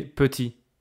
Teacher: You don't say petite. So you don't hear the final T, right? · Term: consonne finale non prononcée